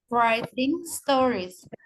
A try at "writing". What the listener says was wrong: Ya, writing. W-nya halus aja. Jadi kita nggak usah kayak mau bilang huruf W itu nggak usah. Jadi writing. Nggak ada langsung huruf R.